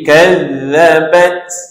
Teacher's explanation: Ta ni salah satu huruf yang sifatnya ialah sifat hamas, kena ada bunyi angin, suara angin sikit. Jadi kadzabat ada sikit angin.